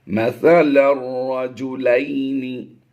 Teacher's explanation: اس لام کو اس شد کی وجہ سے را کے ساتھ ملا دیں گے۔ لام را دو زبر لر کی آواز آئے گی۔